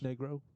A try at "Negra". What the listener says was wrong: Negra. Negra. It's Negra, isn't it? Isn't there an A or is there an O at the end?